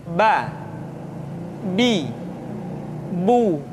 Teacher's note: tetapi anamta tidak anamta tapi [Musik] Anta yang kedua huruf ba huruf ba dikeluarkan dengan cara merapatkan kedua bibir kita